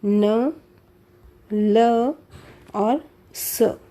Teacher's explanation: संस्कृत में न और स दंत्य थे और हिंदी में ये न और स दोनों क्या हो गए हैं? वत्स्य हो गए हैं। तो यहाँ पर वत्स्य ध्वनियों में आएंगे न, ल और स। · ये व्यंजन ध्वनियाँ ऊपर के दांतों से थोड़ा सा ऊपर वत्स्य के साथ जीभ के स्पर्श से उच्चरित होती हैं। हमारी जो जीभ है उसके स्पर्श से जो हमारा व्यंजन ध्वनियाँ है वो दांतों से थोड़ा सा ऊपर जो वत्स्य भाग है, मसूड़ा जो है, वहाँ पर स्पर्श होकर बोली जाती हैं।